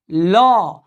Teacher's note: तो जो वायु है, वायु प्रकोष्ठ से जब वायु निकलती है तो ये जीभ के पार्श्व से, पार्श्व का मतलब बगल, ल के उच्चारण में वायु जिह्वा के पार्श्व अर्थात बगल से होके गुजरती है, इसलिए ल का नाम पड़ा पार्श्विक वर्ण या पार्श्विक व्यंजन।